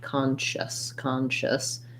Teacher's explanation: It's going to be long, and my shusness are going to be shorter. The SC says an SH sound, so it sounds like sh, and the IOUS, shus, is basically just a schwa sound